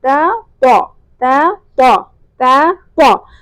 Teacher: طا کس طرح ادا ہوگا کہ زبان کی نوک اوپر والے دانتوں سے ٹکرائے گی، اور جو زبان کا پچھلا حصہ ہے یعنی زبان کی جڑ وہ اوپر کی طرف اٹھے گی، منہ میں ہوا بھری جائے گی اور طا موٹا ادا ہوگا · بیسیکلی تا کو موٹا کرنے کے نتیجے میں طا ادا ہوتا ہے